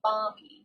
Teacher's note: so we don't really pronounce the l too much